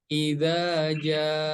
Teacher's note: Jadi mad wajib mutasil harus dibaca panjang 4 harokat